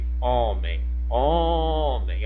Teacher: O O é a sílaba mais forte dessa palavra. Então é a sílaba tônica.